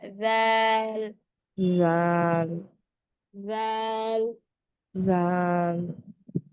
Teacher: জিহ্বার আগাটা উপরে 2 দাঁতের আগার সাথে শুধুমাত্র লাগিয়ে উচ্চারণ করবে। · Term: দালটা